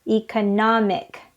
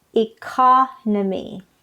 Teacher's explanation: the adjective part is economic it's on the third syllable economic but the noun part is economy the stress is on the second syllable